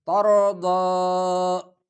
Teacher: اتنا زواد بھی نہ پڑے کہ زوا بن جائے، اور اتنا دال کی طرف بھی مائل نہ کرے کہ دال بن جائے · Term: ضاد